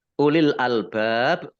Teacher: lamnya dibaca sukun kemudian bak Fath Ali Mad Thobi'i tapi karena bertemu dengan huruf terakhir yang dibaca syukun karena waqof maka menjadi Mad Arid lissukun dibaca panjang boleh dua boleh empat boleh enam harokat